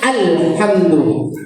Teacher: jangan ada ee qalqalah pada huruf lam yang mati itu